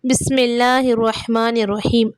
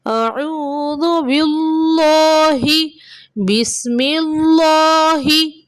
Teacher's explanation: இது தஅவூஸ்லையும் தஸ்மியாலையும் நம்ம ரெண்டு இடத்துலையும் அல்லாஹ் வார்த்தை வரும். இது ரெண்டுத்துலேயும் அந்த அல்லாஹ் வார்த்தை நம்ம மெல்லினமாக தான் சொல்லணும்.